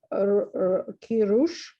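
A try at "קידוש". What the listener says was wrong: No, okay, so this is focusing on the Dalid, the D sound. Notice how it's like squared on the top and dented in on the side. So that's key. Kiddush.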